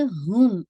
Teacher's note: ہا کی دمہ کو پہلے واضح کرتے ہوئے پھر میم کا ناقص غنہ ایڈ کیجیے گا۔ ہم، ٹھیک ہے، ہا کی دمہ پوری واضح کیجیے، ہم نہیں ہے، ہم، ٹھیک ہے انشاءاللہ تھوڑا سا اس کو واضح کیجیے گا۔